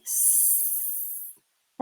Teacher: can you feel any vibration not at all right so that's a voiceless sound